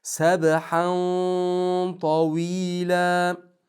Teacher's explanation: tanvinni tod ichiga yo'g'on qilib kirgizamiz